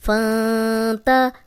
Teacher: اب یہاں نون ساکن ہے، آگے تا آ گیا، حروف ہلکی نہیں ہے، یہاں پھر ہم غنہ کر رہے ہیں، نون کو لمبا کر رہے ہیں. فان تا، ہا پیش واؤ ہو، فان تا ہو واؤ مدہ.